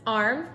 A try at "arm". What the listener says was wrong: There's no R. It's arm.